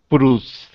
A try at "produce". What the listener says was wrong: So produce, the second syllable will be strong. Can you do second syllable a little stronger?